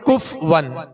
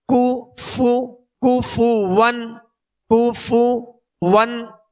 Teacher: اس کو بعض لوگ پڑھتے ہیں کف ون، تو کف ون نہیں، کاف پر پیش ہے، فا پر پیش ہے، دونوں کے پیش یہ صحیح سے ادا کریں گے، ہونٹوں کو گول بھی کریں گے اور بغیر کھینچے بغیر جھٹکا دیے معروف ادا کریں گے.